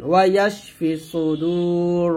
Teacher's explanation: দাল ওয়া পেশ দু এক টান দিবেন। ওয়া ইয়াশফি সুদূর, র জবর র, ওয়া ইয়াশফি সুদূর।